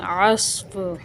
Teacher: عین صاد زبر عص، فا دو زیر فن، عصفن، وقف کی صورت میں عصف، صاد پر حروف ہے، اس کو یہاں موٹا پڑھیں گے اور اس کو بھی بغیر ہلائے پڑھیں گے